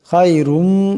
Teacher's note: এই খাকে মোটা আওয়াজে পড়তে হবে